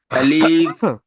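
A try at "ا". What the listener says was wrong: আলিফ টান হবে না।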